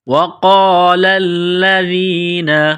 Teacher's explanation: وقال الذین، واو کو پڑھتے وقت ہونٹوں کو گول کرنا ہے، نقطوں والا قاف ہے اس کو موٹا کرنا ہے